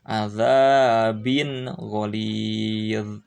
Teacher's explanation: Nah, setiap tanwin atau nun sukun menghadapi ghain, gha, ini harus diidharkan, tidak usah didengungkan, dibaca dengan jelas saja